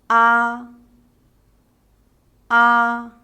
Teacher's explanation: finals first the first one the mouse is wide open ah the tongue is at its lowest and the lips are unrounded